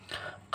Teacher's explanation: का जो होता है वह अघोष अल्पप्राण होता है